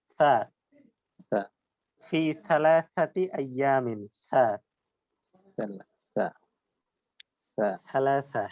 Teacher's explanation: জি, থায়ের উচ্চারণটা আমরা জিহ্বার আগা, উপরের দুই দাঁতের আগার সাথে লাগিয়ে জ, দাল এবং থা। এই থা বলার সময় মুখ থেকে বাতাস বের হবে, জিহ্বাটা দাঁতের আগার সাথে লেগে থাকবে এবং একটি বাতাস বের হবে।